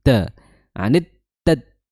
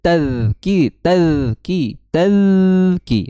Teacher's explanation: Makhrajnya adalah di ujung lidah bertemu dengan ujung gigi seri atas ya atau sedikit mm sedikit ke apa ya keluar ya ujung lidahnya disertai dengan mengalirnya suara jangan sampai tertahan suaranya. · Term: huruf dza